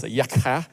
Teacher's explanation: Yakha is like this kind of, glottal sound on the end of it.